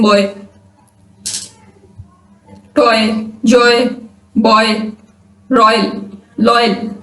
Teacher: इसमें दो vowel letters की साउंड है, एक से वो शुरू होती है और दूसरे पे एंड होती है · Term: डिफ्थोंग